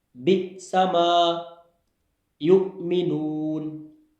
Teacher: حمزہ ساکن ہو تو اس پر جھٹکا ہوتا ہے